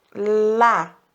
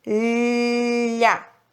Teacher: Lá, mas é a ponta da língua. O som do LH não vai à ponta, vai ao meio da língua. O meio da língua que vai para cima.